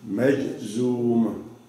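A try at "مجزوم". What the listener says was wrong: Maj, M-A-J, Maj. And then we have the Z. And then, nope, we have to elongate this. Why do we elongate it? Because we have a water right here, right? This elongate this vowel here.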